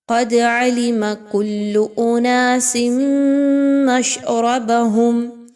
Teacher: اس میں دیکھیں تو دال پر جزم کی علامت ہے، دال کو قلقلہ کرتے ہوئے پڑھیے، دال کو ہلائیے۔ کل اناس تنوین کے بعد میم کا حرف آ رہا ہے، یہاں پر آپ تنوین کی آواز کو میم کی آواز میں مکس کیجئے اور غنے کے ساتھ اناس مشربهم را زبر را کو پر پڑھیں گے۔